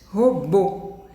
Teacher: Então, o bo que é o mais forte. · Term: sílaba tônica